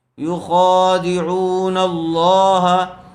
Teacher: لفظ اللہ کے لام سے پہلے والے حرف کے اوپر زبر ہے اس لیے لفظ اللہ کو پر کر کے پڑھیں گے